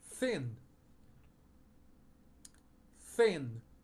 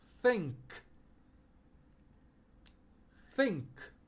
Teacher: fazer o som do f em vez do th